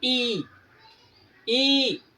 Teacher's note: जबान का अगला भाग अधिक ऊंचाई पर उठता है